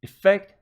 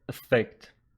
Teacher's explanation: both of them have their stress pattern on the second syllable